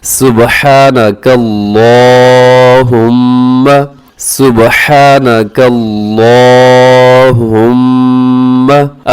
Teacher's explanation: अब सुब्हानकल्लाह, इसमें क्या होता है कि काफ को बारीक रखना है अपने, सुब्हानका, और इस काफ को जब हम आगे मिलाते हैं अल्लाहुम्मा के साथ, तो फिर आगे अल्लाहुम्मा का लाम हमने मोटा रखना होता है, उसके ऊपर खड़ा ज़बर है, उसको भी हमने लंबा करके पढ़ना होता है